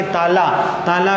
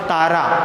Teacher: ताला का ल का क्या हो जाएगा, र, तो ताला का क्या हो जाएगा, तारा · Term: ल का र